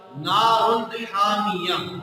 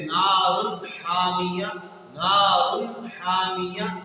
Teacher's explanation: इसकी तनवीन को नून के मखरज से वाज़ेह और साफ पढ़ा जाएगा और इसमें गुन्ना नहीं किया जाएगा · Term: इजहार